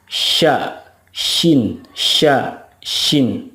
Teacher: kalau syin itu tengah-tengah lidah bertemu atau menempel dengan langit-langit mulut